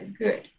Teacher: So the D is not like dedo, it's good. So it's kind of like a T, it stops there, good.